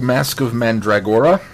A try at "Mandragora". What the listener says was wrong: I think you're emphasizing or too much, but you've got the pronunciation close. Mandragora. Mandragora.